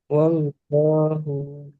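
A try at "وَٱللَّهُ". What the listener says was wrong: Wallahu jangan dipanjangkan H-nya.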